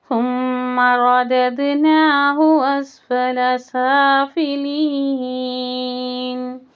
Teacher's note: را کو موٹا، زبان پوری اوپر کی طرف